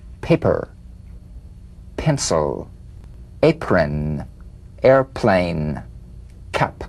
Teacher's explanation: The whispered tap of this drumbeat P is played with a light springing apart of the lips, just like for the B. On the springing away, feel a B in a whisper without any puff of air.